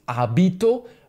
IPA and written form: ˈabito (vestido)